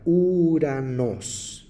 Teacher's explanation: ou es el único diptongo que se contrae al pronunciar y no suena la O sino solamente la u quien desconoce esta regla al leer esta palabra griega diria uranos